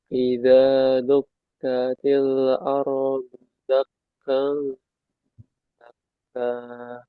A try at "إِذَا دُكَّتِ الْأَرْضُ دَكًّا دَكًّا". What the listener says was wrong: Lamnya jangan mantul. Dukatil ardu dakka dakka.